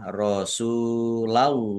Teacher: lam fathah alif mat tobi'i tetapi karena bertemu dengan huruf terakhir yang dibaca sukun karena waqaf maka menjadi mat arif lis sukun. Dibaca panjang boleh 6, 4 atau 2 harokat.